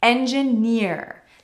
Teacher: The stress is on the last syllable here, which is rare for English, but engineer as a word actually has roots in French, which often has the stress on the last syllable.